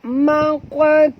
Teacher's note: qaf mati di tengah-tengah kalimah. Kita kena lantunkan dia qalqalah surah. Maqa, maqa tu tebal, jangan baca mak tu, bukan tu tapi tu ya.